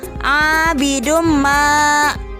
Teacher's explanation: Yang menjadi contohnya yaitu karena domatain bertemu dengan huruf idgham, yaitu huruf mim, maka tanwin tersebut dimasukkan ke dalam huruf mim disertai dengan dengung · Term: idgham bigunnah